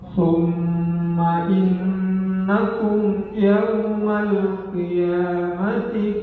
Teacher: Di ayat yang ke-16 ini ada tetap ada dua gunah, yakni mim bertasdid dan nun bertasdid